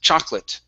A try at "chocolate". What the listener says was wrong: Okay, take out that O. Okay, so it's an chocolate, like that.